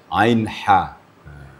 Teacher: Huruf ha itu huruf hala. Nah, makhrajnya adalah ditenggorokkan di tengah. Ha di sama makharijul hurufnya atau makhrajnya dengan ain.